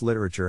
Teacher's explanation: the accent is in the first syllable corresponding to lit